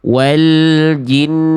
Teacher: n-nya itu santai dulu. 2 ketuk baru masuk ke vokal u-nya. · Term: nun tasydid